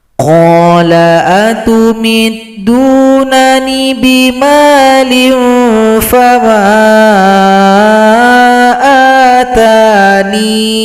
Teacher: huruf nun yang berada sebelumnya dipanjangkan 2 ketukan saja